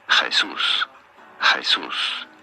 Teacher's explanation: You do want to stress on the second syllable. That's what the accent on the U means here.